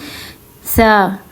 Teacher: सा को पढ़ने का तरीका ये है कि ऊपर और नीचे वाले दांतों के बीच में हम जुबान को रखते हैं